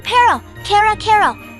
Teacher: Make sure it is just one quick tap, not a long American R.